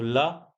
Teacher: ऐसे ही ल को हम बोलते हैं पार्श्विक वर्ण। तो ऐसा व्यंजन वर्ण जिसके उच्चारण में मुख से निकलने वाली वायु जीभ के अगल-बगल यानी दोनों ओर से बाहर आती है